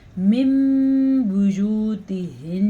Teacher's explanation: میم ادا کیا جائے گا، نون نہیں ادا کیا جائے گا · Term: اقلاب